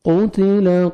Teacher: قتل قاف کو موٹا کر کے پڑھنا ہے, تا کو باریک پڑھیں گے.